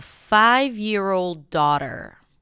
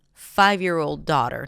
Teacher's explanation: So now daughter is the keyword. 5 is the secondary stress.